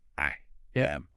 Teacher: you sometimes get a small, almost invisible Y sound connecting them